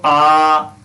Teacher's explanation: अगर बोलते हो आ, ये पश्च होता